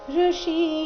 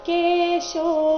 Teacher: ಪಾಂಚಜನ್ಯಂ ಋಷಿಕೇಶೋ, ಈ ಶಬ್ದದಲ್ಲಿ ಎರಡು ಪ್ರಕಾರದ ಶ ಬಂದಿದೆ. ಋಷಿ ಇಲ್ಲಿ ಮೂರ್ಧನ್ಯ ಶ, ಕೇಶೋ ಇಲ್ಲಿ ತಾಲವ್ಯ ಶ.